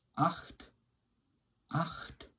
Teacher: it's coming from the back of the throat with the CH sound